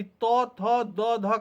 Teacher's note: त्वर्ग वर्ग में त, थ, द, ध और न वर्ण आते हैं और इनका उच्चारण स्थान दंत है, वो मूर्धा के ठीक आगे और दांत पे स्पर्श करता है जीभ